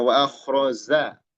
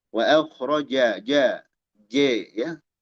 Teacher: Nah, di sini jim, jangan jadi zai. Jangan wa akhraza, keliru.